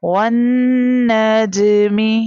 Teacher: means we have to read with bouncing sound when you see جیم has جزم sign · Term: کلکلا